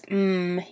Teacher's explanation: your mouth is closed and all of the air is flowing out of your nose but for both of those your air the air is coming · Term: nasal sounds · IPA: /m/